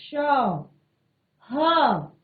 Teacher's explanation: जो मुख से जो एक वायु सरलता से निकलनी थी वो सरलता से ना निकलकर ऊष्मा के साथ निकल रही है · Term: ऊष्म व्यंजन